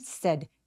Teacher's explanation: 턱을 벌리지 않고 빠르고 뾰족하게 입 앞쪽에서 나는 said.